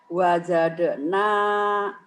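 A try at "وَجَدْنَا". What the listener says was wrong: salah kurang nekan kedalnya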